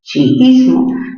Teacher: A ver, recordemos, sería chi, luego viene is, y luego viene mo, chiismo. ¿Dónde tiene mayor fuerza de voz chiismo? En la sílaba is